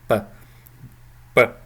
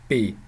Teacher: is a media a media it's also called a media um this is really halfway between an unvoiced b and a voiced B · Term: semi voiced